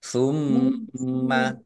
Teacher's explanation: mim tasdid dibaca gunnah atau mendengung, ditahan agar tampak dengungannya